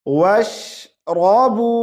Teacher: वाव को शीन से मिलाएंगे